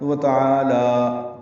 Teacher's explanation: لام کو کھڑا لمبا کریں گے 2 حرکات، وتعالی تو یہ وقف ہو گیا.